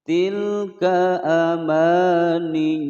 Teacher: Tilka adalah bertasdid, ditekan, tidak boleh dipantulkan. Tilka ka pendek ya.